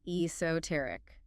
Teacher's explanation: E S O T E R I C. Esoteric four syllables stress on the third.